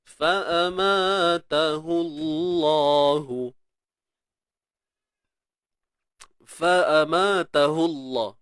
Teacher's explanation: Kalimah Allah ni tebal sebab apa? Sebab sebelumnya ada huruf yang berbaris hadapan. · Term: Kalimah Allah tebal